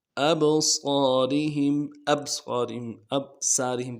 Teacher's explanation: وعلی ابصارہم، ابصارہم، ابصارہم، ابصارہم پڑھتے ہیں، نہ قلقلہ ادا کیا جاتا ہے، با حروف قلقلہ میں سے قلقلہ کرنا چاہیے، اور صاد موٹا حرف ہے، اور صاد کے ساتھ الف مدہ کھینچنا چاہیے، تو ہم یہ ساری چیزوں کو نہیں کیا جاتا۔